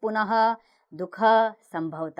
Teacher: विसर्ग का उच्चारण ह के समान होता है